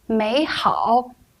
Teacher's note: when two third tone syllables are read in sequence the first syllable turns into the second tone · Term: third tone change